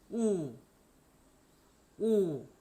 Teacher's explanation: 좀 더 깊은 곳에서 좀 더 뒤쪽에서 소리 낸다라고 생각하시고 그 다음에 우리 입모양도 우 하는 입모양을 정확하게 좀 더 입술을 동그랗게 해갖고 발음하시면 독일어의 우와 비슷한 소리가 납니다.